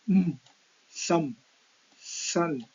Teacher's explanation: This is closed by the closing the lips. So the air from the lungs escapes through the nose. So this produces nasal sounds. · these three are nasal sounds because the sounds come out from the nose or nostrils